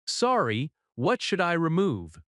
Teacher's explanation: Sorry has a gentle falling tone.